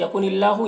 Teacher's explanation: यहाँ पर अल्लाह के लाम को बारीक पढ़ेंगे, खड़ा ज़बर है 1 अलिफ के बराबर खींचेंगे।